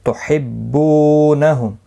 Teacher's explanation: بو واو مدہ ہے، 1 الف کی مقدار کے برابر کھینچ کر پڑھیں گے. میم ساکن کے بعد واو آئے اظہار شفوی ہوگا.